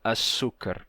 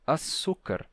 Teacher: eles não diziam açúcar eles diziam um açúcar sem qualquer chiado